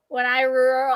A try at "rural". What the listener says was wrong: Rule. Rule. It sounds like rule. R-U-L-E.